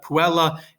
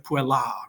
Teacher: Not that you pronounce it that way, it's more emphatic and dramatic to say puella, but you're kind of holding that final A a little longer in the second version of it because you have the macron over the A, right?